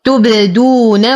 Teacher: أتم ضمة التاء والدال وأقلقل الباء وأرجع عن الضم فيها فأقول تبدو تبدو ولا أقول تبو. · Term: صوت القلقلة